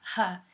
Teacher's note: they're making the glottal sound huh in the initial position